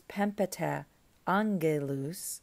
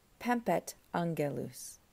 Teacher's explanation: So in the phrase, in the sentence, pempeta angelus, pempeta ends with a vowel sound, and then you have to stop and start another vowel sound with angelus. So instead of pronouncing that uncomfortably, Greek gets rid of the vowel before, marks the missing vowel with an apostrophe, and simply says pempet angelus. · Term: hiatus